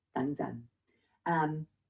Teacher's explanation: that 等 and then 陣, the sixth low tone